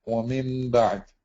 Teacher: There should be a meme with a gunna, but a meme is hidden because of your lips being closed. So this usually has a meme written there, even though it's not part of the word.